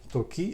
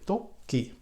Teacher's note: we start the first syllable with low or up pitch, and then we change the pitch down if it's up. For example, to-ki, if we say to-ki, then we go down.